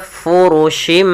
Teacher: Mengganti suara bunyi nun menjadi suara bunyi mim. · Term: iklab